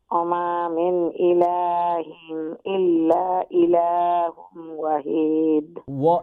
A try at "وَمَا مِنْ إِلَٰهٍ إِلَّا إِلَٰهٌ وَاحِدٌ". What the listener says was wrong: এগেইন ওয়াহিদ ওয়াটা লম্বা না করলে এটা ডেঞ্জার কিন্তু মিনিংটা চেঞ্জ হয়ে যাব এগেইন ওয়ামা মিন ইলাহিন ইল্লা ইলাহু ওয়াহিদ إله واحد লম্বা হবে ওয়াহিদ